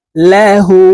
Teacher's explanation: উল্টা পেশের উচ্চারণ ঠোঁট গোল করে এক আলিফটা নিয়ে পড়তে হয়